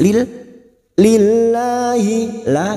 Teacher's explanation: lam jalala yang sebelumnya kasrah kita baca tarqik tipis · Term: tarkik